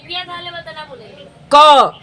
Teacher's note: क का उच्चारण होता है कंठ से